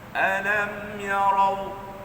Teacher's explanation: Masa rau tu pangkal lidah naik. · Kalau baca alam yarau, itu jadi ra nipis. Sedangkan ra itu ra tebal.